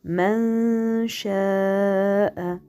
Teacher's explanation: quand je fais man, je ne touche pas le noun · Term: dissimulation